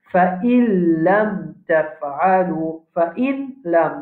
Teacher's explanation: nous avons sakin après nous avons lam c'est idgham